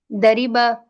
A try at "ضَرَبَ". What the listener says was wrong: نہیں, اس میں ادھر زبر ہوتی ہے, ادھر زیر ہوتی ہے. دربا